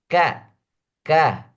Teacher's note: yang paling kecil desisnya adalah huruf k karena k hampir tidak terdengar desisnya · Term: huruf Hamas